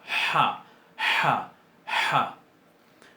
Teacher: Se pronuncia más fuerte. Es una de las guturales típicas de las lenguas semíticas. Típicas. Y se pronuncia bien atrás en la garganta. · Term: Het